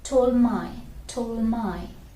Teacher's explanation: So we just hold the D and pronounce the M sound there.